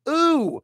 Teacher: There's a little W at the end of that. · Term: high double O vowel sound